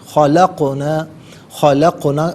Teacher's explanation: قاف طا جیم دال یہ 5 حروف ہیں، قطب و جد اس کا مخفف ہے، تو یہ کہیں پر بھی ساکن ہوں تو ان کی ادائیگی کے وقت آواز لوٹتی ہوئی محسوس ہو، جیسے خلقنا نہیں، خلقنا، خلقنا میں قاف اس طریقے سے ادا کر رہا ہوں کہ آواز لوٹتی ہوئی محسوس ہو رہی ہے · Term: قلقلہ